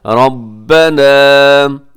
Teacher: یہ سب سے پہلے دیکھیے گا ربنا، اس میں کیا ہے کہ را کے اوپر حرکت ہے، تو آپ نے را کو پر پڑھنا ہے اور اس کے بعد جو الف کی وجہ سے ہم نے اس کو تھوڑا سا لمبا بھی کرنا ہے